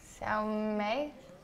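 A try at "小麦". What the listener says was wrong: No, you're saying sister. It's Xiao Mai.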